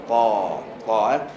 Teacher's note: pastikan bila nak qalqalahkan dua huruf ni bunyi dia seolah-olah dia berbaris atas